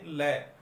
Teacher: तो जीभ के दोनों बगल से जिस व्यंजन की ध्वनि निकलती है, जैसे हम बोलते हैं लय, तो लय की जब ध्वनि निकलती है तो जीभ के दोनों बगल से जो है वो इसकी ध्वनि निकलती है, इसलिए इसको पार्श्विक व्यंजन कहा जाता है।